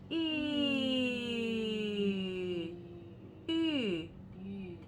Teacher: it has to have both the e and the u sound mixed together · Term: mixed vowel